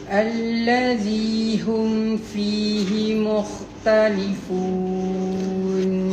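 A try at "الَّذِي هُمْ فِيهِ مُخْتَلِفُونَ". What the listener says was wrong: Kha tu bagi lagi smooth dan panjang lagi kan.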